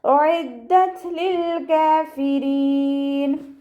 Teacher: അയിനിൻ്റെ മഖ്റജ് വസത്തുൽ ഹൽക്ക്, തൊണ്ടയുടെ മധ്യഭാഗം, സൗണ്ട് ക്ലിയർ ആക്കി കൊടുക്കുക. ദാലിന് ശ്രദ്ധ വന്നു, 2 ഹർഫുകൾ ഉച്ചരിക്കുന്ന കനം കൊടുക്കുക.